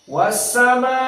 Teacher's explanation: Hamzah membaca mad wajib muttasil dengan al-isba dikenyangkan menjadi enam harakat